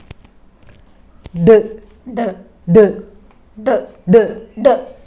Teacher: കൈയുടെ മുഷ്ടി ചുരുട്ടി തൊണ്ടയുടെ മുകളിൽ വെക്കുക ഡ ഇങ്ങനെ ശബ്ദം ഉണ്ടാക്കിക്കുക അപ്പോൾ നാവിന്റെ തുമ്പ് വായുടെ മുകൾ വശത്ത് സ്പർശിക്കുന്നതും വിടുന്നതും കുട്ടി സ്പർശനത്തിലൂടെ മനസ്സിലാക്കാൻ സാധിക്കുന്നു അതോടൊപ്പം കയ്യുടെ മുഷ്ടി തൊണ്ടയുടെ മുകളിൽ വെച്ചുകൊണ്ട് ഡ